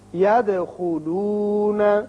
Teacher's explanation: دال ساکن ہے جو کہ حروف قلقلہ میں سے ہے، اس کی صفت قلقلہ ادا کریں گے